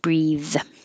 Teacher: breathe is the verb, and it has the vowel e as in he. Breathe in, breathe out, and it has the voiced th, breathe.